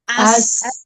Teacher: tuntaskan dulu safirnya sekedar satu harakat